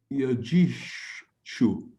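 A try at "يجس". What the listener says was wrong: this is not a she.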